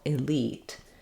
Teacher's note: then we'll have a tense e in the second part of the word